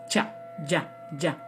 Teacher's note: They're called the guttural position. And then when we come to the palate, you have sounds, such as cha, ja, ja, where the tongue is flat on the palate. Those are called palatal sounds.